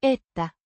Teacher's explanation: with the stress on the first syllable